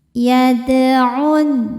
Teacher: Dan sukunnya ini sukun asli. Cara bacanya kita pantulkan dalnya dengan pantulan yang kecil. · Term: qalqalah sugra